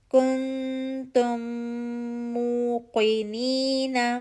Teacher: کن کاف کی پیش کے لیے ہونٹ گول کریں گے، اخفا کی آواز انرول ہو کر آئے گی